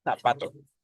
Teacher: En México podría suceder porque comparten el mismo sonido, pero el sonido de la Z en España es interdental, o sea, la lengua se coloca en medio de los dientes